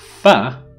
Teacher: What I do is I approximate my lower lip towards my upper teeth, and they touch each other, but they allow air to pass through the teeth from in between the teeth and the lip. · So fa is a labiodental fricative. In the articulation of this sound, the two articulators are the upper teeth and the lower lip.